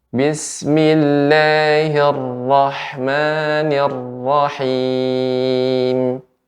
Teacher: huruf Ra ini ada getaran sedikit